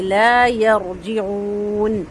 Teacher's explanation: لا 2 حرکت لمبا ہوگا، یا پر نہیں کریں گے، صرف رو کو پر کریں گے، اور جیم کا جو زیر ہے اس کو معروف رکھیں گے